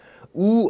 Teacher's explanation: 우 하고 발음하면 혀가 뒤로 쑥 빠지는 느낌이 납니다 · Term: 후설모음